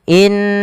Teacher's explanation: mad thobi'i panjangkan dua harakat fathah bertemu alif